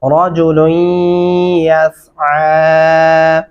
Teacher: یہاں پہ لام اور یا کے درمیانی حصے میں غنہ بھی ہوگا